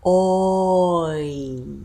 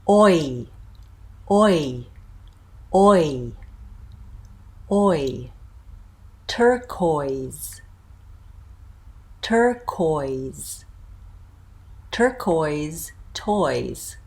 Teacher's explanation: you're going to start kind of mid and back, and you're going to end high in front. Oi. So notice a little bit rounding there.